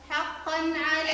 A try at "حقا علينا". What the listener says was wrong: حقا بين التضعيف مش حقا علي. حقا علينا بين التضعيف.